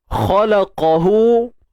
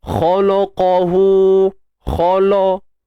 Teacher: Kha tebal, lam nipis, qaf tebal.